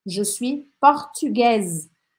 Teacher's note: Aqui a diferença está que no feminino eu vou falar o S